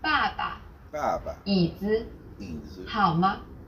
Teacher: Besides the 4 stressed tones, there's a neutral tone. This is very light, weak, and short.